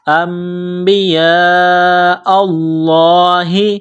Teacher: ساتھ ملانا ہے، غنہ کریں گے، آواز ناک میں چھپائیں گے، نون ساکن کے بعد با ہے، یہاں اقلاب غنہ کیا جائے گا ، انبیاء اللہ، یہ لمبی مد ہے، 4 الف کے لمٹ · یہ لمبی مد ہے، 4 الف کے لمٹ میں کھینچنا ہے